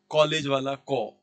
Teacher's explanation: ये आ और ओ के बीच की ध्वनि है